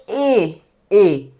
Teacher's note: तो जब ए बोल रहे हैं तो हमारी जीभ का जो फर्स्ट भाग है, आगे का भाग है, वो टच हो रहा है। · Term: अग्र स्वर